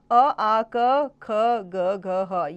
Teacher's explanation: ये कंठ से बोले जाते हैं। इन्हें कंठे कहते हैं।